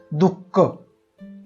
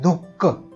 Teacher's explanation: विसर्गाचा उच्चार ह या वर्णाला थोडासा हिसडा देऊन केलेल्या उच्चारासारखा असतो